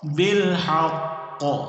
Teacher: اس قوف پر سختی اور جماؤ کے ساتھ قلقلہ کرنا ہے۔